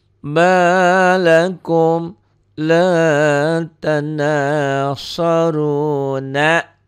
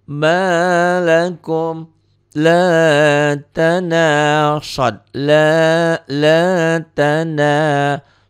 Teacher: Runa, runya cuma 1 alif, 2 ketukan, ya 2 harokat. Tapi kalau dihentikan ini jadi 5. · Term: mad arid disukun